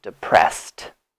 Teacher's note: s does not have vibration if I touch here there is no sound so there's no vibration here no movement in my throat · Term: T sound